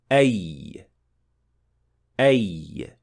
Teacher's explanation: But as for الياء غير المادية, it is pronounced from the middle part of the tongue, which is raised towards the hard palate. But the point at which ya is produced is slightly behind the point of shin and jim, as you can see in the chart. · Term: semi-vowel